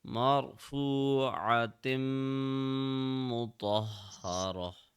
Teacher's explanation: When you are connecting the round ta with the meme, you have to apply a gunna of 2 seconds. 2 seconds of pressing on meme.